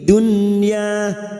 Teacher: bertemunya nun sukun dengan huruf ya dalam satu kalimat namanya idhar wajib, dibaca jelas tanpa mendengung.